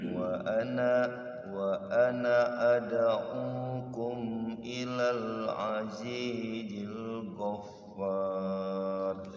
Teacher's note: Wa ana ad'ukum walaupun ada alifnya, ana itu dibaca pendek. Kecuali waqaf di ana dua harokat baru.